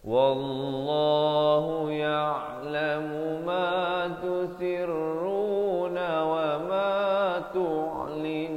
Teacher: lafaz jalalah di sini perkataan Allah dibacakan dengan tebal dua harakat